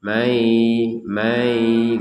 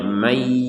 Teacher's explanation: Kalau ditarik-tarik mai may mai gitu langsung saja may langsung masuk ke ya. Jangan memanjangkan huruf ma menjadi mai. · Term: idgham bigunah